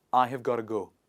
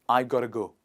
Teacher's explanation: like chunks like this in daily life we say gotta go got to go comes together and it changes to gotta go